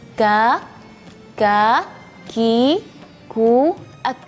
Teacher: Kalau huruf kaf ini beda sama huruf qaf karena huruf kaf ini tipis ya dibanding sama huruf kaf. Dan juga makhrajnya walaupun di pangkal lidah tapi dari bagian langit-langit yang keras